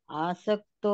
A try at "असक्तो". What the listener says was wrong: आसक्त तो कहाँ है? आसक्त तो बताओ पहले कहाँ है? आ कहाँ है ये? हाँ, असक्तो।